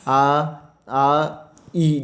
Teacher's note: जिन स्वरों को बोलने में हमारे होठों की स्थिति जो है वो गोलाकार नहीं होगी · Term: आवृतमुखी